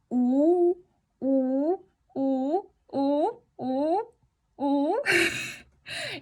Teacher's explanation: Si eso no funciona para ti, también podemos pronunciar u, pero cambia tus labios para hacer como normalmente haces el sonido i. Entonces decimos u, pero los labios van a ser como por decir la i.